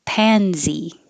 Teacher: it looks like an s but it sounds like a z